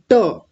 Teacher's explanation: जब आप ट बोलेंगे तो जीभ कहाँ जाके लगती है? ऊपर उस गड्ढे में जाकर के टच होती है। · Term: मूर्धन्य टकार